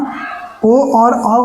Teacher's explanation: ओ और औ का कंठ और ओष्ठ होता है उच्चारण स्थान।